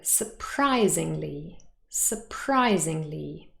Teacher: the stress has not changed it remains on pry on the second syllable